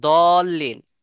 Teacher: জিহ্বার পার্শ্ব দাঁতের পার্শ্বের সাথে লাগবে